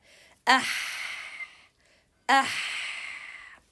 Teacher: Ah, ah, like this. Letter ha is produced from the middle part of the throat. · it has a whisper, so we exhale lots of air while reading the ha.